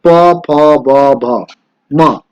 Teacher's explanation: प, फ, ब, भ, म को ओष्ठ से उच्चारण करते हैं।